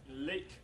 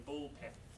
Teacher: the L in lake, for example, is much more audible than the L in ball pen.